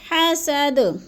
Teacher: حسد کی دال جو ہے وقف کی صورت میں ساکن کر کے پڑھیں گے، جزم لگا کر، اور تھوڑا سا ہم نے اس پہ قلقلہ بھی کرنا ہے، ہلانا ہے اس کو